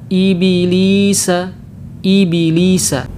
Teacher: Qalqalah pada huruf ba itu terbawa dengan harokat kasrah. Nah, ini bacaan yang keliru.